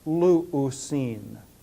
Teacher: When an omicron goes through compensatory lengthening, it becomes the diphthong u. So we wind up with the form luusin.